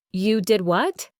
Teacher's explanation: For disbelief, you might exclaim, "You did what?" with strong stress on did and what, and a rising intonation, showing shock